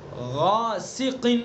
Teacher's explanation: غاسق، غین کو بھی پر، الف کو بھی پر